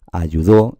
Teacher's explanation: Eso es así porque lleva una tilde, nos está indicando que esa debe ser la tónica. Sigue constando de las mismas 3 sílabas, solo que la sílaba tónica en este caso es do.